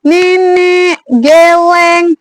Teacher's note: E yang posisi lidahnya itu madya bawah, ya, madya bawah. Terus dia menggunakan lidah bagian depan, posisi mulutnya itu semi terbuka.